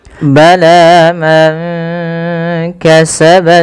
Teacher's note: Pada ketika kita melafalkan bala man kasaba, panjangkan huruf la-nya sepanjang 2 harakat karena la di sini ada alif kecil yang datang setelahnya dan ia berada di atas huruf ya. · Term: mad tabi'i